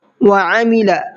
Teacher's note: عین کو حلق سے نکالنا ہے اور لام کو کھینچنا نہیں ہے، لام کو جلدی پڑھنا ہے اس لیے کہ لام کے اوپر زبر ہے۔